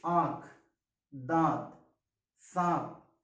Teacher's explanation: वायु जो है वो आपकी नासिका और मुख दोनों से बाहर आती है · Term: अनुनासिक